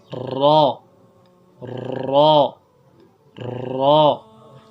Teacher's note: را کی ادائیگی میں ترتراہٹ جو ہے زبان میں پیدا کرنی ہے اور اس کو پر پڑھنا ہے